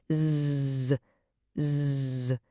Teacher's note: it involves a really strong vibration right in your vocal cords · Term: zzz sound